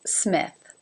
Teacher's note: Smith begins and ends with unvoiced consonants